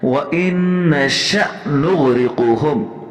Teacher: حمزے کے اوپر جزم ہے، جھٹکا دینا ہے، اور پہلے جو نون ہے مشدد اس پر غنہ بھی کرنا ہے